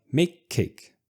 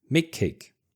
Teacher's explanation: And this is exactly the same with a C sound like make cake. So again, I get into the position to fully pronounce make, but I stop the air and then I push the air to normally pronounce cake.